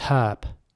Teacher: in American English the H is not pronounced in many cases so it's herb not herp that would be British although some · in British English, the H is basically pronounced. So it's herb. It starts with a H sound, with an H sound.